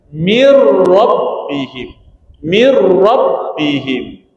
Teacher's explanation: Jelaskan yang nun ni masuk pada ra. Bunyi ra ni kena jelas. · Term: idgham bila ghunnah